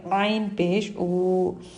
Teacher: عین حلق کے بیچ والے حصے سے ادا ہوتا ہے، اس کو باریک پڑھیں گے